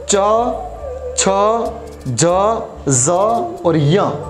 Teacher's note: तालव्य यानी तालु से बोले जाने वाले वर्ण या अक्षर